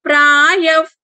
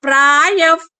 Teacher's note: ప ముందు వచ్చిన విసర్గ కాబట్టి ఎఫ్ సౌండ్ రావాలి.